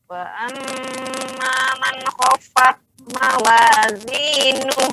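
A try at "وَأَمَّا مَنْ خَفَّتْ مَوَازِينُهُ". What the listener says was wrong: Bu, fat. Ah, bukan mantul. Anginnya, Bu. Anginnya. Itu ya, dikunci Bu, dikunci L ya. Ya, tadi gak ada anginnya, sekarang udah betul ada anginnya. Sama ya, setiap huruf yang ta atau ka sukun maka dia ada keluar anginnya.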